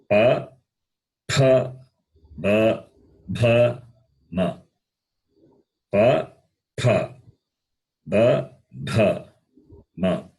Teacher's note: When you say, the lip comes into contact. The lip touches, upper lip touches the lower lip. Therefore, they are called labials. The sound is produced with the lips.